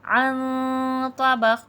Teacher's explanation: عن میں نون ساکن میں اخفا ہوگا اور حرف مستعلیہ کا حرف تو موٹا حرف ہے تو اخفا بھی موٹا ہوگا. عن طبق، قاف میں قلقلہ واضح ہوگا.